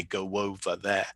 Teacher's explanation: native speakers are going to say go W there with a W sound inserted